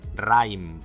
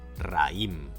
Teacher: Por ejemplo, aquí, en raïm, sin la diéresis, las vocales ai serían un diptongo decreciente y las pronunciaríamos juntas en la misma sílaba: raim. Pero no las pronunciamos así y, a fin de separarlas, colocamos una diéresis sobre la i: ra-ïm.